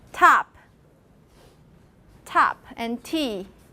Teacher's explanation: It's T with aspiration.